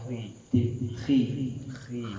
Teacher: Nah, ketika dia kasroh, ya karena dia tidak punya sifat itbaq, huruf kho tidak punya sifat itbaq, hanya isti'la saja dia tidak punya sifat itbaq. Maka tafkhimnya nisbi ketika di kasroh. Khi, bukan khui, salah. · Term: tafkhim nisbi